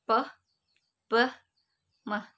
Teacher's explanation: Place of articulation refers to where the vocal tract, the construction of airflow, takes place. Bilabial are produced with both lips